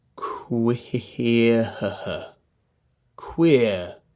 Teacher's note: Notice I'm getting the w shape ready as I'm doing the k.